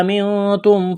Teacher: نون ساکن کے بعد تا ہے، حروف اخفا ہے، غنہ کریں گے، آواز ناک میں چھپائیں گے